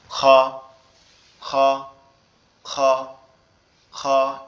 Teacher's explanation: তো আমরা কি করব, খটা কিভাবে উচ্চারণ করব, খটা উচ্চারণ করার সময় আমাদের কণ্ঠনালীর শেষ ভাগ অর্থাৎ গলার সাথে যে অংশটা লেগে আছে এই অংশটা থেকে উচ্চারিত করব